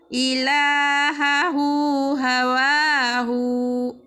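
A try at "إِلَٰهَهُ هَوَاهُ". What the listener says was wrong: Pendek. Ilahahu hawahu. Pendek.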